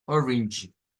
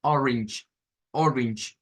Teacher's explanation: La E no suena, suena una R, aquí se hace la R aproximada